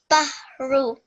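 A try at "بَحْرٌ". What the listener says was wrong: It needs to be a little bit thicker. It comes from deep in your throat. Ha. This is ha, like house. This is ha. Bahru.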